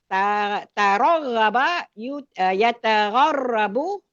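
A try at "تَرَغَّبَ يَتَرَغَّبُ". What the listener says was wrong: Ya taraghabu tertukar hurufnya.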